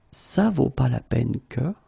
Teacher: it's possible not to pronounce the negative parts